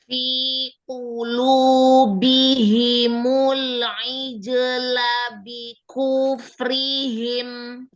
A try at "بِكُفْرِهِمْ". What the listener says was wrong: Ku jangan tamtid. Bi kufrihim. Bikuf langsung. Bikuf jangan bikuf bikufrihim. Jangan kuf itu namanya tamtid. Ayo jangan diayun, jangan dipanjangkan kunya.